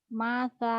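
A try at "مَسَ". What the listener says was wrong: masa, masa, cadel ya, cadel. Masa, masa, cadel. Kayak lidahnya kayak kena api gitu, kayak panas. Masa, masa.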